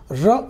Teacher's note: र जब आप बोलेंगे ना तो जीभ की नोक के अग्र भाग में आपको कंपन महसूस होगा। ठीक है ना, इसलिए इसको प्रकंपित व्यंजन कहते हैं।